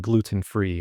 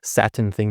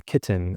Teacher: you have these nice strong tees in places that you don't normally hear them across the the rest of the country, but in Utah you do